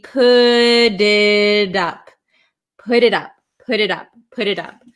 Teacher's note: the times in American English it's going to turn into to a flap T which sounds like a d so put it and then we have an i again and